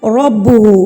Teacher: را کو پر کر کے پڑھنا ہے یعنی کہ موٹا کر کے پڑھنا ہے